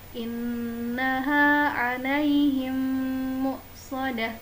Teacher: Menahan nun tasydid dan mim bertemu dengan mim lamanya adalah sama, yaitu 3 harokat.